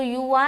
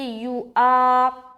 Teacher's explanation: واو کو نہیں پڑھنا بلکہ اس کے اوپر جو حمزہ لکھا ہوا ہے اس کو پڑھنا ہے۔ بعض اوقات لوگ حمزہ نہیں وا پڑھتے ہیں، وا، یو وا، تو یو وا نہیں پڑھنا۔